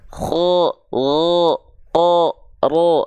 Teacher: kalau huruf tebal ketika fathah bunyi vokalnya akan condong membuat bunyi vokal O